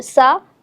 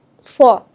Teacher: سین باریک پڑھا جاتا ہے اور صاد جو ہے وہ پر یعنی موٹا کر کے پڑھا جاتا ہے